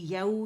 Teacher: फिर याऊ जो है हमारे पास लीन है, वाव लीन है, और इसे नरमी से अदा करेंगे, फ़तह के लिए आवाज़ ऊपर जाएगी और नरमी से वाव से मिलाएंगे